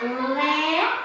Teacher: a penúltima sílaba é mais forte Então ela é uma paroxítona Mas é uma paroxítona que terminou em E então eu não